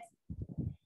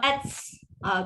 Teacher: Bunyi stop, nafas terlepas sikit. At. Kalau ats, tu dah terlebih sangat. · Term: huruf ta